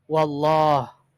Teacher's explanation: maka Allahnya dibaca tebal atau tafkhim